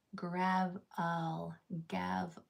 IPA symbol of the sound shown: ə